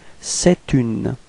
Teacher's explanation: so the liaison would sound like t